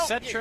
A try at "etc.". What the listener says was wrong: It is pronounced etc. ETC. Etc. Etc. There's no ek.